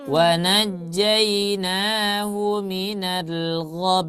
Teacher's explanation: wa najainahu minal gham Bukan gham. Ghonnya nggak panjang, tapi langsung ke mim.